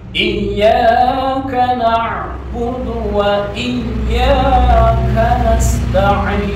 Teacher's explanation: bukan hamzah mati, tapi itu ain mati ya, atau ain sukun. Jadi harus kedengaran ain sukunnya.